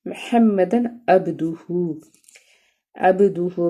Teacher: با جو ہے حروف قلقلہ میں سے ہے اور اس کو ہم نے جزم کے ساتھ ہے تو کمزور قلقلہ کریں گے